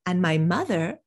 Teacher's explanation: mother now this is a different person than my sister so i'm going to put a little contrast intonation on mother